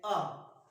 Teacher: आ का उच्चारण किया तो जीव का पीछे का भाग उठता है, पीछे का भाग उठने की वजह से ये पश्च स्वर मिलेगा, तो आ किसमें आएगा, पश्च स्वर में।